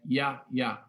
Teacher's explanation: ele não soa como J, ele soa como Ya, né? Ya, ya, né? Ele é uma semivogal